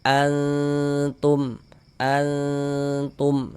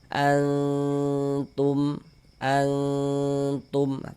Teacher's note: Kemudian didengungkan, dighunahkan. Jadi di bagian annya tuh suaranya itu kita tahan, kita panjangkan sejenak. Antum, antum tunya pendek ya. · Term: ikhfa hakiki